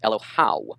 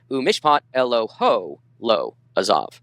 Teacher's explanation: Here is what we call a contraction of a diphthong, okay, an AW, now contracting to O.